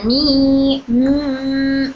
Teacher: मीम की आवाज हमारे नाक में भी जाती है · मीम में क्या होता है? नाक में वाइब्रेशन आता है।